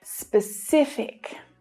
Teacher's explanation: The stress is on the middle syllable here.